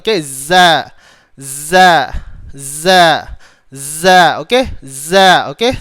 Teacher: Sebab apa? Sebab huruf zai dia ada sifat rakhawah. Ada sifat apa? Rakhawah. Terlepas suara.